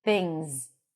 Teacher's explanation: notice that we have the ng sound and then the z.